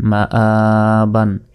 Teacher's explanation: আলিফের উপর খারা জবর, এটা থাকার কারণে এখানে এক আলিফ পরিমাণ টেনে পড়ছি